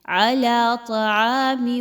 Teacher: طا اس کو خوب موٹا کر کے پڑھیے۔ عین الف زبر آ، الف مدہ ہے، 1 سے 2 الف کے برابر پڑھیے۔